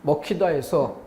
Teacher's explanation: 앞말의 기역 받침이 뒤에 히읗을 만나서 키읔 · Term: 자음 축약